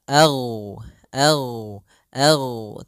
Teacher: gain itu sifatnya adalah jahar jahar artinya tertahannya nafas yang kedua gain adalah sifatnya rakhawah rakhawah itu mengalirnya suara sehingga ag ag ag tapi tidak ada nafas kita AG enggak